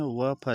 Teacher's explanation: निचले ओठ व ऊपरी दांतों से बोले जाते हैं। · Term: दंतोष्ठ